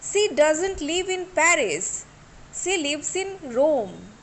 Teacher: I should put stress on the name of the place, that is Paris and Rome.